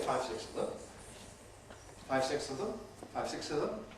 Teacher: certainly the [θ] goes, and we may well get some reduction of the two [s]s to a single one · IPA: [ˈfaɪv ˈsɪkss], [ˈfaɪv ˈsɪks əv ðəm]